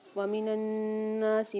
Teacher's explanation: ومن الناسی میں نون پر مشدد ہے، یہاں غنہ کر کے پڑھیں گے